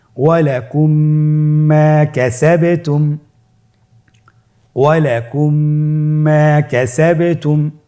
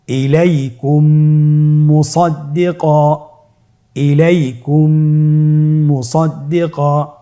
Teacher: মিম সাকিনকে পরবর্তী মিমের সাথে মিলিয়ে পড়তে হবে গুণনার সহিত।